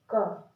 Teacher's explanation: और जो आखिरी में आवाज निकलती है वो आ की आवाज निकलती है, वो आ की ध्वनि निकलती है। आराम से बोल के देखिए, क। · जब आप क बोलेंगे तो क वाली जो आवाज है, जो क वाली ध्वनि है, वो थोड़ी देर में खत्म हो जाती है, और जो आखिरी में आवाज निकलती है वो आ की आवाज निकलती है, वो आ की ध्वनि निकलती है।